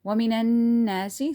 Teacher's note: there's a ghunna here because there is nun tashdid